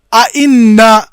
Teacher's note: पहला हमजा भी पूरा अदा किया और दूसरा हमजा भी पूरा अदा किया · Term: तहकीक